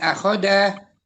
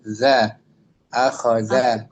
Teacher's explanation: Ujung lidah kita menempel ke gigi seri atas.